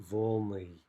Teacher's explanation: We can predict the stress is going to jump back, and we get volny